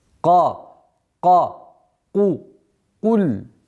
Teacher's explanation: Нужно обращать внимание, чтобы звук «каф», твердый звук «каф» не перешел мягкий звук «каф»